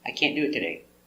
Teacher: You don't hear any T.